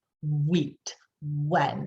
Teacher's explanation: most of the time we'll say it with that rounded lips at the front and our voice box turned on. Wheat, when, and you'll feel that vibration.